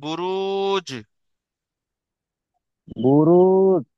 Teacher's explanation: এটা একটু ধাক্কা দিয়ে পড়তে হয়। হরফে কলকলা, জিম হরফে কলকলা, তাই জিমকে কলকলা করে।